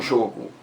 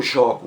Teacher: o primeiro ó é fechado substantivo o jogo já o verbo é aberto